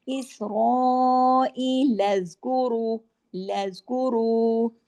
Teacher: لام کو زیادہ نہیں کھینچنا، لام کو آگے جوڑنا ہے